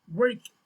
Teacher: The W sound is called the labial velar approximant, which means that you round your lips and form a narrow space at the back of your mouth with your tongue. The W sound is made through the mouth and is voiced. So it means that when it's voiced, you are going to feel like a little vibration on your vocal cord, right?